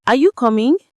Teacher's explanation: And of course, the answer is B, rising. It's a yes or no question, right? So your voice naturally goes up at the end.